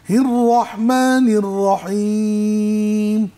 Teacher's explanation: হির র এর মধ্যে তাকরির হয়, একটু কেঁপে ওঠে